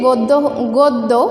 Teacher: আমরা দেখছি যে গদ্য গ দয়ে জফলা, গয়ে ওকার হয়ে গেছে